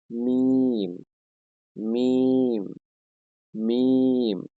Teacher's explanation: দুই ঠোটের শুকন জায়গায় হতে উচ্চারিত হয়